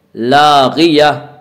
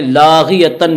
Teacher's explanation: نہ کھینچیں، لاغیہ، تا دو زبر تن، لاغیتن میں گولتا ہے، گولتا کو حالت وقف میں ہائے ساکنہ سے بدل کر پڑھیں گے ، لاغیہ، حالت وقف میں لاغیتن نہیں پڑھیں گے، جب ہم